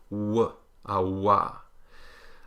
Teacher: We have 3 approximants, the alveolar the palatal y, and the labial velar, meaning lips rounded, back of tongue up